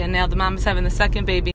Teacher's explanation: she also totally drops the G in having, so now it sounds like havin'